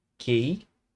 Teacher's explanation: eu estou usando o Q e o U junto com o E aqui, mas o som do U ele não aparece, né? Então é um dígrafo, Q e U, que eu estou usando para representar o som do Q, basicamente, né?